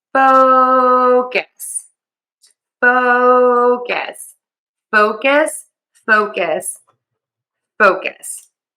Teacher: this word is focus, and I am stressing syllable number 1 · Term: syllable stress